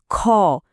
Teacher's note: যেমন ক আর ঠিক তারপরেই আছে মহাপ্রাণ বর্ণ। যেখানে বাতাসের চাপ অনেক বেশি থাকে।